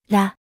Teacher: ら、 The R sounds are pronounced with the tongue lightly flaps against the alveolar ridge, producing a sound that is a blend of R and L sounds.